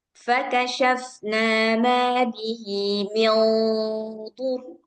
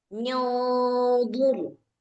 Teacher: Nah, jadi dia gunahnya udah ikut tebal, udah siap-siap ke huruf yang setelahnya. Kalau huruf setelahnya dhad, berarti lidah kita ini udah siap-siap ke makhraj dhad.